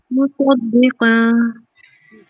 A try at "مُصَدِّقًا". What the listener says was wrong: اس میں صاد کی آواز تھوڑی آپ کی ہائڈ ہو جا رہی ہے. سواد کی تھوڑی سی پریکٹس کریے گا.